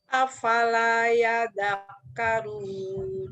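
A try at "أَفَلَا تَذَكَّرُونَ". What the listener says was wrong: Ta, bukan ya, titiknya di atas. Afala tadakkarun.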